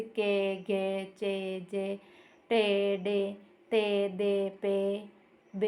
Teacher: अल्प प्राण जिनके उच्चारण में कम वायु निकलती